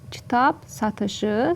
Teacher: Samitə başlanan söz gəldiyinə görə p kimi tələffüz olunar